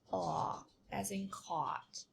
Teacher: Um the mouth is the lips are rounded and more relaxed